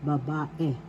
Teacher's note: the second syllable has the accent